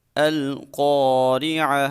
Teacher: جب الف سے پہلے حرف کے اوپر زبر آ جائے تو الف مدہ ہوتا ہے، تو الف مدہ کو ہم ایک الف کے برابر لمبا کر کے پڑھتے ہیں، اور جب الف کسی موٹے حرف کے بعد آ رہا ہو تو ہم الف کو بھی موٹا پڑھیں گے۔ را کے نیچے زیر ہے، اس کو باریک پڑھیں گے